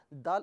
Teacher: دال زبان کی نوک اور اوپر کے دانتوں کی جڑ سے ادا کیا جاتا ہے، اور دونوں کو ملائیے اور ملا کر دال ادا کیجئے۔